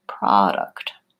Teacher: two cases where the first syllable pro is stressed. It can either say pro or pra. And when it's not stressed, it's going to say pra, proposal, professional, etc.